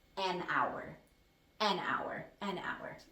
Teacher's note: there's no h there's no consonant it's ow that's a vowel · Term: vowel sound